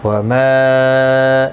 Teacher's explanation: یہاں پر مد منفصل ہے، 3 الف کی مقدار کے برابر کھینچ کر پڑھیں گے